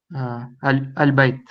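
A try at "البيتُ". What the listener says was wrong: Pronounce the end of the word, please.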